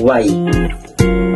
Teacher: lumalapit o dumidiin sa matigas na bahagi ng ngalangala ng ibabaw ng punong dila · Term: palatal